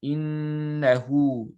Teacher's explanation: It's just 2 counts. Innahu. Don't make it longer than that. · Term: med silat as-sughra